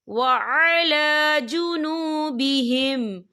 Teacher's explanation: لام کے اوپر کھڑی حرکات ہے، تو ہم اسے 2 یا 3 حرکت کے برابر کھینچ کے پڑھیں گے